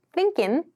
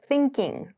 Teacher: It means that G sound is missing